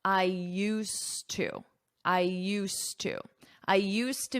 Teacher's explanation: you don't hear this D at all